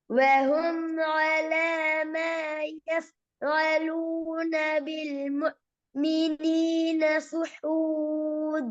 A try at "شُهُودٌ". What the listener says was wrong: என்ன சுஹூதுன்னு போகுது? சுஹூதா இது வந்து ஏன்